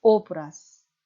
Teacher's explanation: 오브라즈가 유성자음 z가 마지막 자음으로 나와서 z의 짝인 무성은 스 발음이 나는 것입니다